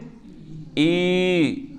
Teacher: جیسے حمزہ یا زیر ای، حمزہ یا زیر ای، تو ہم نے ای میں یا کو کھینچ لیا، یہ ہوتا ہے یا مدہ